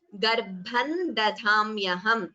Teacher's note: We could combine the sandhi and chant it as Garbhan dadhamyaham. So da is Alpaprana followed by dha, Mahaprana.